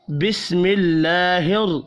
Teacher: بسم اللہ میں اللہ کا نام زیر کی وجہ سے باریک پڑھا جائے گا